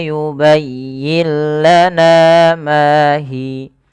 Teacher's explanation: Maka cara membacanya, nunnya dimasukkan ke huruf lam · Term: idgham bila gunnah